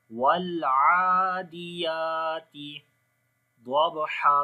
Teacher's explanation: ضاد کو موٹا پڑھیں گے، حروف استعلاء میں سے ہے۔